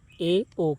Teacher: अर्ध संवृत में मुख द्वार आधा बंद रहता है।